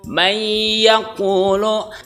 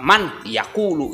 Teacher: Karena ya itu masuk dalam kategori yanmu tadi, ya, nun bin wawu, maka wajib dibaca idgham bi ghunah, memasukkan. Jadi nunnya itu dihilangkan, diidghamkan ke huruf yang kedua yaitu huruf ya.